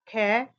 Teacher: ख एक अघोष ध्वनि है। उच्चारण में कंपन नहीं होता और महाप्राण ध्वनि है। उच्चारण में अधिक वायु निकलती है। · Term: अघोष महाप्राण